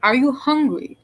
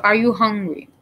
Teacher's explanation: I'm saying the last word, hungry, it's an important word. It's a functional word of the sentence, the main word of the sentence. I'm focusing on it. I'm making it a little lengthy.